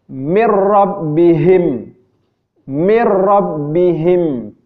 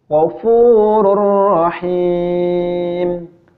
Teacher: idgham bilagunnah dileburkan akan tetapi tidak didengungkan